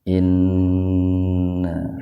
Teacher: nun bertasdid itu gunnah. Gunnah itu mendengung.